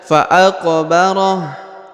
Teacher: Huruf qaf dibaca pantul karena huruf qaf yang berharokat sukun adalah salah satu daripada huruf-huruf qalqalah atau huruf-huruf pantul, maka dibaca fa'aqbarah.